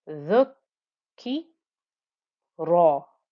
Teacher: the ra is thick and heavy with its fatha